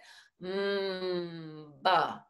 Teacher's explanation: There's a big vibration happening at the lips there.